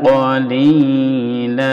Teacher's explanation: ini qalilan karena berhenti dibaca qalila panjang. Namanya mad iwad.